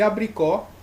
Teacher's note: a última mais forte é a sílaba tônica então a sílaba tônica que ficar oxítona que termina aí em